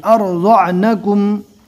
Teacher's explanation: یہاں پر مد ہے چھوٹی، کم سے کم 2 اور زیادہ سے زیادہ 3 الف کے برابر کھینچ کر پڑھنا ہے